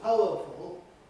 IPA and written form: ˈpaʊəfl̩ (powerful)